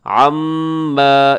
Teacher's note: میم مشدد ہے تو یہاں پر آپ نے غنہ کرنا ہے، تھوڑا سا لمبا بھی کیجیے گا